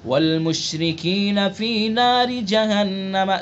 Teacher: والمشرکین فی نار جہنم، ناری را کے نیچے زیر ہے، را کو باریک پڑھیں گے، جہنم غنہ کریں گے، نون مشدد ہے